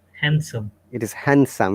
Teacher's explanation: in handsome there is no d sound yeah handsome it is handsome yeah these schwa sound or omitted